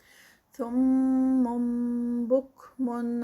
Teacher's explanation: سم میں اقلاب ہو رہا ہے کیونکہ سم من تھا اصل میں، لیکن وہ آگے با آنے کی وجہ سے اس کو ہم نے نون کی بجائے میم کی ساؤنڈ دینی ہے. بک من اظہار ہے کیونکہ تنوین کے بعد حروف ہلکی آئین آ گیا ہے.